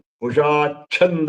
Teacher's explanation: ನಾನು ಕುಶಾಚ್ಛಂದ ಅಂತ ಚಕಾರ ಒತ್ತಿ, ಚಕಾರಕ್ಕೆ ಒತ್ತು ಕೊಟ್ಟು, ಚಕಾರ ಅಲ್ಪ ಪ್ರಾಣ, ಅದಕ್ಕೆ ಒತ್ತಕ್ಷರ ಅಚ್ಚಕಾರ ಮಹಾಪ್ರಾಣ, ಹಾಗೆ ಹೇಳ್ಬೇಕು